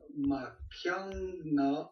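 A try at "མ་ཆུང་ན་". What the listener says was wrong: Alors stop, Machungna, c'est très bien. Et explique-moi comment le Chung devient un Kiang. T'es d'accord que c'est Machungna?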